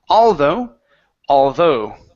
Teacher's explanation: the stress is at the end of the word